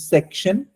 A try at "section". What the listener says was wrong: I think you have a little problem with the sha words.